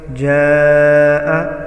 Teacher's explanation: जाआ मद मुत्तसिल वाजिब है, 4 से 5 अलिफ के बराबर खींच कर पढ़ा जाएगा।